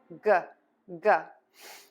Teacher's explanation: the tip of your tongue is going to be down, back of your tongue is pulled up, air is just going to puff out of your mouth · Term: g sound